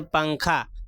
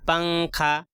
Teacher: جیسے اردو میں پنکھا کے نون کو پڑھتے ہیں، جیسے پنکھا، پنکھا کا جو نون ہے آواز ناک میں چھپ رہی ہے اور تھوڑا کھینچ کر بھی پڑھ رہے ہیں پنکھا، تو اسی طریقے سے کہہ رہے ہیں تنوین و نون ساکن کے بعد حروف اخفا آئیں گے تو نون کی آواز کو ناک میں چھپا کر ایک الف کے برابر کھینچ کر پڑھیں گے۔